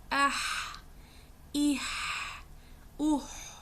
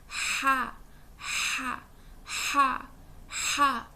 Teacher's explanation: ہا بھی حلق کے درمیانی حصے سے ادا ہوگا, اور جیسے میں پہلے بتا چکی ہوں کہ ہا کی ادائیگی شارپ ہوتی ہے.